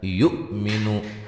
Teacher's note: حمزہ کو جھٹکے سے ادا کریں گے